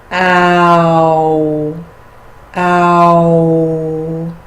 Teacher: The long ah plus the u, ow, ow. And if you close the lips and touch the lips at the end of that, ow.